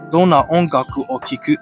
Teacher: you drop the question particle ka and use the rising intonation to ask a question